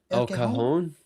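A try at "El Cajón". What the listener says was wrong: It sounds like you're saying El Cojon. El Cajon. No.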